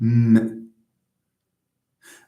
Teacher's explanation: How about the sound m? M, it's voiced, of course. And it's bilabial because you need two lips to produce it.